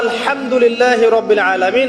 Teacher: এই হা এর মাখরাজ কোথায়? হা এর মাখরাজ কোথায় বলেন একজন? কণ্ঠনালীর মাঝখান থেকে। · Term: হায়ে হত্তির